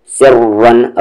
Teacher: را کو ہیوی کریں گے، سی کو را میں ملاتے ہوئے بھی اور جب را کو ریپیٹ کریں گے تب بھی. اسی لیے میں نے کہا تھا کہ یہ ایکسیپشن ہے کہ را کی آواز اوپر جائے یا سامنے جائے تو ہیوی.